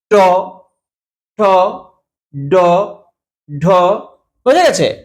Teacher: তারপরে কিন্তু শ্বাসবায়ুটাকে নির্গত করছে। তাহলে জীভের সামনের দিকটা যখন তালু স্পর্শ করে শ্বাসবায়ুকে বাধা দেয় এবং যেসব বর্ণগুলো উচ্চারিত উচ্চারিত হয় তাকে মূর্ধ বলছে।